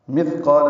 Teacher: مثقال میں تھا ساکن ہے، اس پہ ہم سے مث یہ نرمی سے پڑھا جائے گا. قاف پورا الف مدہ ہے، دو حرکات لمبا ہے